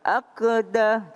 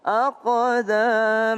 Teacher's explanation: Ada huruf qof. Qof juga qalqalah. Aqakum. Jangan aqdah tapi aqo pakai o.